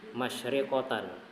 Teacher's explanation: sifat tafasyi, menyebarnya angin di mulut